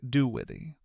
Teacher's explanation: We take do with the and let the words blend smoothly together into something like do withy.